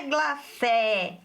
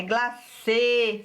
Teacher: o acento circunflexo, não é glacé, é glacê, fechado